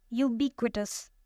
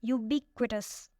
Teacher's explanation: It has 4 syllables and the stress is on the second one.